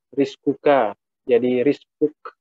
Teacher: Jadi k, jadi misalkan rizkuka, jadi rizkuk. Jadi kalau disukunkan, huruf K itu seperti ada desisan. Ada penekanan dikit, tapi tidak seperti huruf Qaf. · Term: hamas itu mendesis